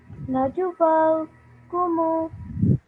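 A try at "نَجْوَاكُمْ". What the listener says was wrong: This is, remember, this is a sukoon. This is a dhamma, the bigger one with the larger hole in the middle. This is just a sukoon, so it's a mute letter. So we read it as najwakum.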